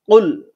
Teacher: কুল কুল, এটার উচ্চারণটা ঠিক জিব্বার গোড়া থেকে আসবে, জিব্বার গোড়া তার বরাবর উপরে তালুর সঙ্গে লাগাইয়া